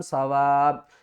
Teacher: وقف کی صورت میں ہم کیا کریں گے کہ اوپر والی 2 پیش ختم ہو جائیں گی اور اس کو پڑھیں گے سوا. سوا لاسٹ میں حمزہ کی آواز ضرور آنی چاہیے.